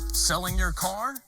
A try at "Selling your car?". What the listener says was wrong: Now, instead of going down, I want you to stay up and strong all the way through.